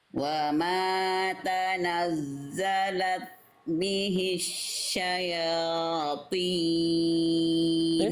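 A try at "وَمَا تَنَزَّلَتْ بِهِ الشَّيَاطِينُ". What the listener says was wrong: Ini bagus huruf tebalnya Bunda ya. Oke, sekarang coba ee tinggal diulang lagi sedikit ta sukunnya. Coba deh kasih percikan lagi. Tadi kurang terasa hamsnya ya.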